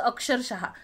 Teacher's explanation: तसंच अक्षरशः हा शब्द लिहिताना आता हे जे दोन विसर्ग आहे त्याला आपण ह चा उच्चार करतो, जसं आहा असतं आपलं, तसं अक्षरशः.